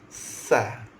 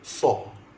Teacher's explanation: huruf sin senyum, sa. Huruf sad muncul mulut, sa. Tempat parking sama. Lidah kita duduk tempat yang sama. Muncung, sad, sa.